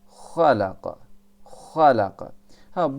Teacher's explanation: ha ise o boğazda titreme yapmaz